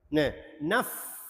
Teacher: Hilang sifat fa. Fa sifat dia hamas juga. Berangin juga.